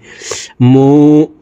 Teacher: ঠোঁট গোল করে একালিফ টানি পড়তে হবে